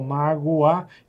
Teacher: Então aqui você tem uma semivogal, o O é uma semivogal e o A é uma vogal. Então é um ditongo que nós chamamos de ditongo crescente.